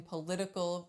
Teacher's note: in politics we don't flap in political we do